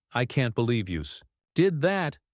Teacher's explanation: I can't believe you did that stress on can't and that